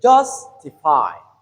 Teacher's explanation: So justify ju is the stress syllable.